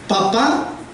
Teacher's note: papá la sílaba tónica o la sílaba fuerte es la última